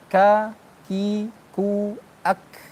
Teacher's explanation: Dia pangkal lidah bertemu dengan langit atas yang keras. Tapi sebagian juga yang lunak. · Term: kaf